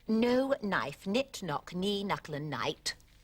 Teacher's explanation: one doesn't pronounce the k these days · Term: the K is silent